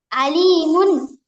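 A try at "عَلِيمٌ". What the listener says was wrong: আলিতে টানতে হবে, আলিমুন।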